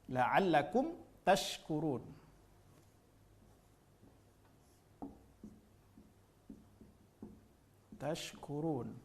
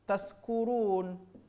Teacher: Wastul lisan, tengah-tengah lidah nempel ke tengah-tengah langit-langit atas. Ini. Ketika kita tidak memberikan pada makhrajnya, ya, tidak keluar pada makhraj tengah-tengah lidah, maka sebahagian dari kita membacanya menjadi taskurun. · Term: huruf shin